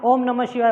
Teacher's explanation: तो देखो, जैसे हम किसी मंत्र का उच्चारण करते हैं, तो मंत्र का उच्चारण करते हैं, जैसे हम ओम नमः शिवाय बोलते हैं, तो ओम को हम थोड़ा सा लंबा खींचते हैं, ठीक है। ओ और म के बीच का जो गैप होता है और उसके बीच के जो स्वर होता है, उस स्वर को हम लंबा खींचते हैं, ठीक है। तो वहाँ पर जो स्वर प्रयोग में आता है उसी स्वर को कहा जाता है प्लूत स्वर, ठीक है।